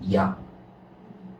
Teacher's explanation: 이랑 아를 쭉 붙여서 발음하면 됩니다. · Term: 이중모음